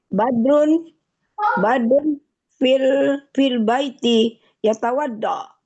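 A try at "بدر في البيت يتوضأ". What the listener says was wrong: Yatawadda, bagus.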